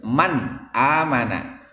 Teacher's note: Arti izhar yaitu jelaskan, ya. Man amana, jelas itu artinya tidak gunah atau tidak dengung, ya. Jangan dibikin lama, jangan man amana, nggak boleh, tapi harus man amana.